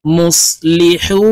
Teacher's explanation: হু এখানে 3 আলিফ টেনে নুনকে সাকিন করে ফেলতে হবে, কারণ মদের হরফের বামের হরফে ওয়াকফ হইলে মধ্যে আরজি।